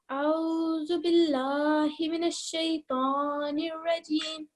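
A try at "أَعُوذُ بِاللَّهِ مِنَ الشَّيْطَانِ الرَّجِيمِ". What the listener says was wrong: Please make sure that you're pronouncing each of these letters separately. Okay. There's no aw in Arabic. It is a'udhu.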